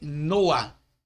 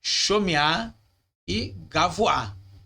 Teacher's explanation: Esse A aqui, que no caso nós estamos falando do kametz, ele deve soar antes da gutural, embora venha escrito debaixo dela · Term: patar furtivo